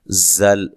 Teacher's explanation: زا کو سیٹی سے ادا کرنا ہے